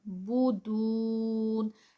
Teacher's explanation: تعبدون، تا عین کی ساؤنڈ، بودون، یہاں پر واو مدہ اور اس پہ سٹاپ ہے تو 4 کاؤنٹس